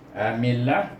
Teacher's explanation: Nipis bunyinya sebab mim baris bawah bertemu dengan nama Allah.